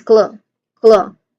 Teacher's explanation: So the second syllable, it carries the primary stress. The O sound is an O and food, preceded by a key consonant blend.